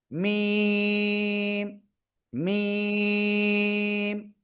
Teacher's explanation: কি মিম এই অক্ষরের নাম কি মিম এই যে দুই ঠোট দুই ঠোটের শুকন জায়গা থেকে উচ্চারণ করতে হবে